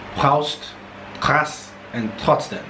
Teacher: Now what you want to do is you want to create a sound using the UVULA, but it's voiceless. So you want to make it kind of close to, you know, the previous sounds, which is more of a push of air because it's fricative.